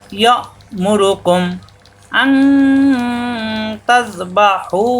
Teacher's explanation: ইয়া ইয়া মেলবে হামজার সাথে, হামজার সাকিন শক্ত, গলার ভিতরে আটকে যাবে, বাড়ি খাবে না